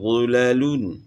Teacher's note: لام باریک ہوگا، غا کو موٹا پڑھنا ہے، غلیلون۔ تو اس طریقے سے جو ہے نا اس کو ادا کرنا ہے۔